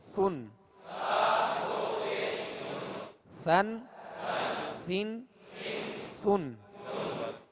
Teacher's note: بالکل نرم ہوا سے یہ ادا ہوتا ہے، اس میں سختی نہ ہو، سیٹی کی آواز پیدا نہ ہو